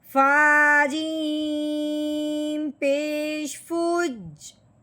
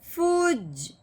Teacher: تو یہاں اب ہم نے فا کو جیم کے ساتھ ملانا ہے. صرف دبانا ہے. غنہ وغیرہ کچھ نہیں کرنا.